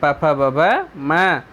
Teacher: प वर्ग, प फ ब भ म, ये ओठ से बोले जाते हैं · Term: ओष्ठ